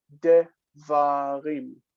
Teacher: And the first syllable, because it's distant, reduces to shva.